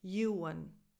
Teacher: U as in you, a schwa, and then an N at the end.